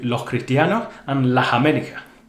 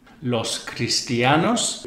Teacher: an s at the end of words and syllables is often pronounced like an aspirate h sound the h sound in english rather than in standard spanish